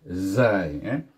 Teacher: Safir, iaitu bunyinya berdesir yang kuat seperti bunyi unggas.